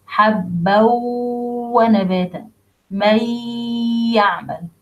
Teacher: do إدغام clearly and perfectly, 2 beats between النون الساكنة and letter الواو, النون الساكنة and letter الياء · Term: إدغام with غنة